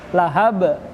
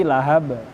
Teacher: Lahab, tidak dipantulkan, tidak ditekankan. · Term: qalqalahnya